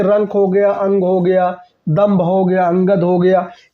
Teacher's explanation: अनुस्वार का मतलब होता है ये ऐसे वर्ण होते हैं जिनका उच्चारण नाक से होता है। ठीक है ना, जैसे रंक हो गया, अंग हो गया, दम्भ हो गया, अंगद हो गया, ये सभी अनुस्वार होते हैं।